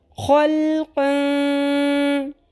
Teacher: لمبا بھی کریں گے اور چھپائیں گے بھی آواز کو. نون کی آواز کلیئر کر کے نہیں پڑھنی ہے، نون کی ساؤنڈ نہیں آنی چاہیے. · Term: اخفا